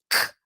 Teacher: a língua vai lá atrás na garganta explode o ar C surdo não faz força no pescoço sai bastante ventinho